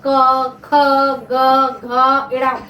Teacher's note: देखो इसमें व्यंजन में जैसे कंठ से, अगर गले से अगर कोई आवाज आती है, जैसे कंठ से गले से आवाज आती है